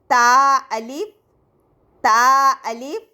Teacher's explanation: زبان کی نوک جب ثنایا علیہ کی جڑ سے لگے تو یہ حرف ادا ہوتا ہے